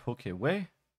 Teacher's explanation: so we have stress on the final syllable here